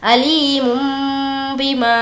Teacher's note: غنہ بھی ہوگا یعنی ناک میں آواز کو روکیں گے